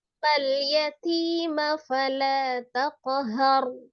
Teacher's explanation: Roknya tebal, kemudian taknya dialhamskan.